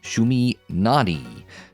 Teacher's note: the emphasis is on the first syllable in English